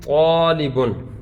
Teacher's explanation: الف سے پہلے طا جو ہے یہ حروف مستعلیہ میں سے ہے، لہذا یہاں پر الف کو ہم پر کر کے پڑھیں گے۔ تو الف اپنے ما قبل کے تابع ہوتا ہے، اگر ما قبل حرف باریک ہو تو الف کو باریک پڑھا جاتا ہے، اگر ما قبل حرف پر ہو تو الف کو ہم پر پڑھتے ہیں۔